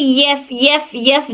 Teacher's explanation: फ में हमारे ऊपर के दो दांत नीचे के हंठ की तरी को टच करते